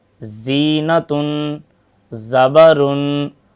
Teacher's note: ذال کی آواز باریک اور نرم ہوتی ہے، جیسے ذکر۔ زا کی آواز سخت، باریک اور سیٹی والی ہوتی ہے